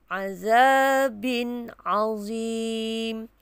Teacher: Jelaskan sebutan tanwin dan juga ain, tanpa ada dengung. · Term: izhar halqi